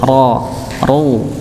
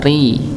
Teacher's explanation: ketika misalnya huruf ra dia fathah atau dhammah, maka dia dibaca tebal ra, ru. Okay. Kalau misal ra-nya berharokat kasrah, maka dibaca tipis